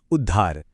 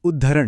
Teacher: त बदल जाता है द में और ह की आवाज बन जाती है ध की। जैसे उत और हार मिलकर बनते हैं उद्धार।